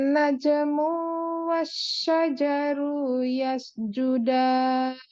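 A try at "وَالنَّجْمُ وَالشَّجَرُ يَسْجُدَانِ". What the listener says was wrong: Oke, berkaitan dengan mu-nya sekarang. Coba baca tidak panjang, karena mu-nya nggak ada setelahnya, nggak ada wawu kan?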